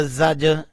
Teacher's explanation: جیم کے اوپر کلکلا کیا، جیم کو اٹھایا